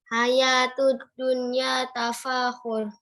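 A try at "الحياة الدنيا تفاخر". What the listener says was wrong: Iya, kasih barisnya terakhir. Coba ulang. Hayatud dunya. Iya, tapahurun. Ya, tapahurun.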